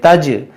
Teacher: جیم بھی حروف قلقلہ ہے اور یہ ساکن ہے، اس لیے اس میں بھی قلقلہ کریں گے